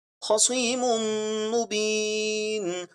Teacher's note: ادغام شفوی، میم کو میم سے ملا کر پڑھنا ہے.